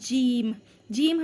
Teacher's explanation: ज़बान का बीच और तालू के बीच से लगकर अदा होता है जीम